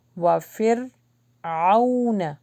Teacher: را کا مخرج ہے اور اس کے اوپر جزم ہے تو اس کو نا باؤنس بیک نہیں کرنا